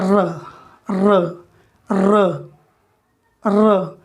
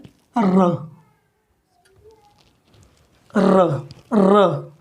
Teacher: वायु कंपित हो रही है, वहाँ कंपन पैदा हो रहा है मसूड़े के पास। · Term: प्रकंपित